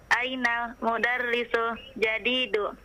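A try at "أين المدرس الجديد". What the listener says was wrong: Ainal. Nah. Diperjelas alif lamnya. Mohon sekali lagi diperjelas alif lamnya. Ainal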